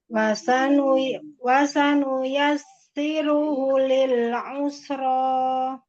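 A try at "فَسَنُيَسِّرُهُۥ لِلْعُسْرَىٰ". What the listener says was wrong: Bukan wafa.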